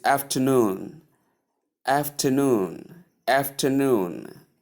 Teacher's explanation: The stress is placed on the last syllable that is the third syllable here which is noon.